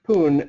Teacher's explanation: and so then because there's just the single P announced that it'll be produced with aspiration so we would hear that sounding like poon